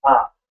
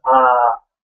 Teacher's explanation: a short or a single vowel sound is just one beat, ah. Whereas a double vowel is ah, two beats.